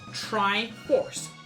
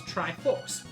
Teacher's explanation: But, up until a few years ago, what I would have said was Triforce. Just, that R just doesn't happen. It's all the same sounds, except for the R.